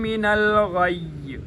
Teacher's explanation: قد تبین الرشد، رشد من الغی، من الغی، یہاں پر بھی ایک دفعہ یا کو پچھلی حرکت کے ساتھ غین کے ساتھ پڑھیں گے، اور یا کی اپنی حرکت کے ساتھ جب پڑھنے کی باری آئے گی تو چونکہ آگے وقف ہو رہا ہے، وقف کی وجہ سے آخری حرف کو ساکن کیا جاتا ہے لہٰذا یا کو ساکن کر دیں گے